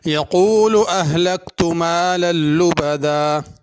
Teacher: اہلکت میں کاف باریک ہے، اس کو بڑا قاف نہیں پڑھنا